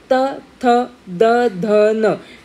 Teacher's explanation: यर tongue is slightly touching यर teeth so दे are known as डेंटल्स